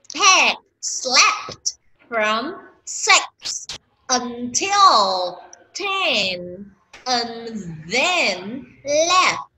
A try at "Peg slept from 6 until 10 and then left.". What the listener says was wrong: Đọc chậm cho đúng giùm cái đã hề. Từ đọc nhanh ha.